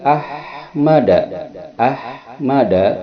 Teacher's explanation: ketika H terucap ada hembusan napas keluar, itu adalah hams